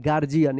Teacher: यहाँ पे डी का जो है ना ज उच्चारण हो रहा है, गार्जियन। यहाँ पे यू जो है ना साइलेंट है, गार्जियन।